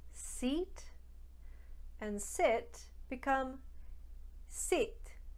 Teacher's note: an italian speaker will make a sound that sounds somewhere in between the two